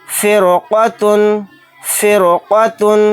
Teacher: اس کی وجہ یہ ہے کہ یہاں پر حروف مستعلیہ کے حروف میں سے ایک حرف ہے قاف، تو اس قاف کی وجہ سے رائے ساکنہ موٹا پڑھا جائے گا. اگر یہاں پر قاف نہ ہوتا، حروف مستعلیہ کے حروف میں سے حرف نہ ہوتا یہاں پر، تو پھر را کو باریک پڑھتے.